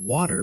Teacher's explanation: American English reduces T to a flap sound between vowels, like water becomes waiter.